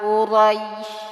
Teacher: nah ini ada huruf ro rnya dibaca tebal ro harakatnya fathah